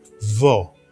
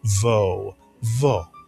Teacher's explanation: Israelis tend to pronounce it a little bit shorter and softer.